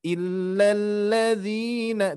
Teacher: hati-hati lam bertasydid tidak didengung